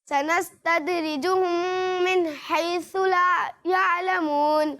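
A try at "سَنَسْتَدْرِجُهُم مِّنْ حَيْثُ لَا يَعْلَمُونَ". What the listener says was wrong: حیثو میں ابھی بھی پریکٹس کی ضرورت ہے، ٹھیک ہے. حیثو آپ نے نہیں پڑھنا، ٹھیک ہے.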